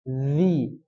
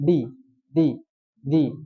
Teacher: Zi itu bacanya diseret. Bukan dilepas. Zi. Bukan di.